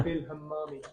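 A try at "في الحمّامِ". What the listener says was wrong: Fil hammami. Pronounce the ha correctly.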